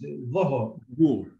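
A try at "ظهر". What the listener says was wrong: Dhuhr. Dhuhr. Now you have to work a little bit on your va because it sounds very much like a da.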